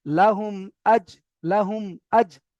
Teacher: মিমের উপরে সাকিন এসেছে, মিম সাকিনের পরে হামজা এসেছে, তাই মিম সাকিনকে বিনা গুণে জাহির করে তাড়াতাড়ি পড়তে হবে।